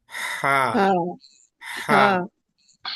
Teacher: గొంతు మధ్యలో ఉన్న గోలి దగ్గర మీరు వేలు పెట్టి చూస్తే చిన్నగా మీకు వైబ్రేషన్ మీకు అనిపిస్తుంది